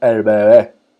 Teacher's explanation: Eh, el, el, el nené, el nené o el bebé, la vocal E se hace mucho más abierta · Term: vocales medias